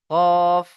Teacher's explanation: জিভের গোড়া এবং উপরের তালুর সাথে লেগে উচ্চারণ হয় কফ